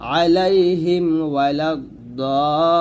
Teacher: মিম সাকিনের পর ওয়াও আসার কারণে আমরা এখানে কি করব না, গুণনা করব না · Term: স্পষ্ট করে পড়তে হবে